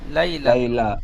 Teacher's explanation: লাইলা বলে লামে টান হয়ে যাচ্ছে, টানটা হবে না।